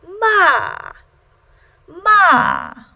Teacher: fourth tone and that starts at the highest point on your personal register and drops all the way the lowest point on your personal